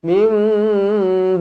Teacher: nama hukum dia iqlab di baca dengung dua harakat